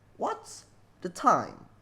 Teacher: Jadi penempatan stressnya itu ada di awal sama di akhir kalimat.